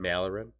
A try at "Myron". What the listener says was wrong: No, Myron. Myron. There's no L. Why do you keep using an L?